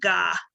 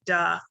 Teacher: be more appropriate than gah and i would consider that backing he's using a back sound in place of a front sound